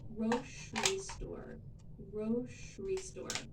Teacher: for me, I say grocery with a sh sound in the middle.